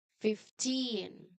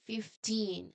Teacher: the strong part here is the end teen